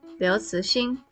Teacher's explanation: It is Liu Cixin, second tone. Ci, second tone. Xin, first tone.